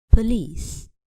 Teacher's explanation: the noun police has the schwa in the first syllable so we can't be stressed we cannot say for lease but we stress instead the second · We cannot say police, but we stress instead the second syllable with length.